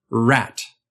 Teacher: Remember the American r, as in rat, from the last video? Your tongue was pulled a little bit up in the back and a little bit up in the front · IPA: [ɹ]